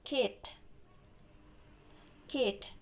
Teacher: your tongue is raised really high towards the roof of your mouth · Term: high vowels